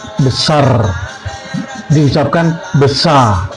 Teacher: Di Malaysia, terutama Semenanjung, R di akhir kata sering tidak digetarkan. Misalnya besar diucapkan besar. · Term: Pelafalan R